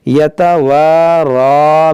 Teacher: یہ را پر کھڑا زبر ہے، اس کو موٹا کریں گے، تھوڑا کھینچیں گے